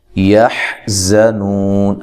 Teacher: یحزنون ہا کو واضح نکالنا ہے، زا کو زور سے ادا کرنا ہے، سیٹی کے ساتھ ادا کرنا ہے. نو واو مدہ ہے، وقف کی صورت میں مد کر سکتے ہیں.